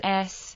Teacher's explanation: Types: Sibilants, S, voiceless coronal sibilant, as in English sip